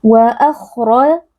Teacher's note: huruf kha dan juga huruf ra sama-sama tebal karena di sini huruf ra berharakat fathah dibaca dengan mengangkat pangkal lidah. Du huruf tebal dibaca dengan mengangkat pangkal lidah.